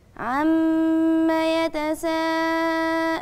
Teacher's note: مد متصل الواجب اربع حركات